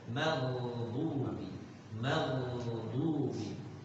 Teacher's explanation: Ghain punya sifat isti'alah, artinya apa? Tebal.